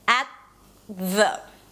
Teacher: So let's produce the T on the teeth. At, you see the tongue goes up, at the.